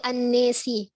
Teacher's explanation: Fathahnya nun dan alif dibaca dengan imalah.